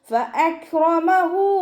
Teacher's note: മേലെ മുൻപല്ലിൻ്റെ അറ്റം താഴെ ചുണ്ടിൻ്റെ ഉൾവശത്ത് നനഞ്ഞ ഭാഗത്ത് കൊണ്ടുവച്ചിട്ട് ഉച്ചരിക്കുക കേട്ടോ.